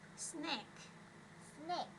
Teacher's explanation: chúng ta sẽ có âm K ở phía sau nha, nhớ là ha, đẩy hơi ra.